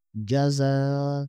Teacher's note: یہاں پر مد منفصل ہے اس کو 5 یا 6 الف کے برابر کھینچیں گے